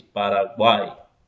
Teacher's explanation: som direto pela boca, sem passar pelo nariz, Paraguai. Enxaguei, enxaguei, som aberto. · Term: orais